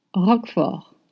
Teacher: You don't pronounce the T and you say Roquefort.